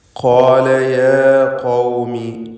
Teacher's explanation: ഖാല എന്ന് പറയുമ്പോൾ ഖാഫിനും അലിഫിനും തഫ്ഖീമാണ്, തടിപ്പിച്ചുച്ചരിക്കണം. യാ ഖൗമി, ഖാഫ് വീണ്ടും ആവർത്തിക്കുന്നു.